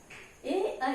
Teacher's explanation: ए, ऐ कंठ और तालु की सहायता से बोले जाते हैं।